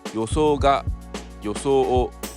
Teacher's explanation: There is no accent kernel of the words. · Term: first type of pitch accent